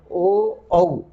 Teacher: ओ और औ दीर्घ स्वर हैं दोनों ही, और ये ओ और औ कंठोष्ठम, कंठ और ओष्ठ। कंठ गला जहाँ कवर्ग का उच्चारण हुआ था, आ का उच्चारण हुआ था, और उसके बाद ओष्ठ, ओ औ, यहाँ ओठों का सहारा भी लेना पड़ता है।